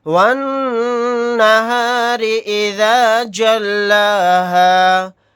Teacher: یہاں پر نون کے اوپر تشدید ہے تو یہاں پر غنہ کر کے پڑھیں گے، را کے نیچے زیر، را کو باریک پڑھیں گے۔